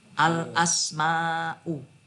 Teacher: Jadi al ya dibaca al, tidak ada samar-samar dan tidak ada melebur ke huruf berikutnya. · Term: dibaca jelas